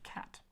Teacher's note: c is always going to be this hard k sound never soft as in city